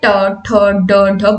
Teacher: एक बार इनका उच्चारण स्थान में जीभ तालू के कठोर अ तालू का जो कठोर हिस्सा होता है उसको छूती है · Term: मूर्धन्य वर्ण